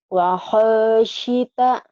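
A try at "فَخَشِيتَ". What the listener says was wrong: Fa bukan wa. Kedengarannya wa ya. Fa. Fa. Fa khasyita.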